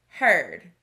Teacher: This word has a vowel team, EA, that we learned sounds like a long E. But in this word, we hear er.